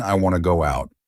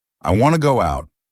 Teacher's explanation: Instead of want to, I said wanna. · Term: connected speech